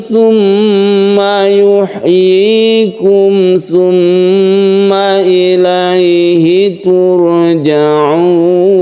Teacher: tmma kita sebut dengan ghunah musyadadah tasdid mim dan tasdid Nun tasdid mim ini kita baca gunah karena dia itu bertasydid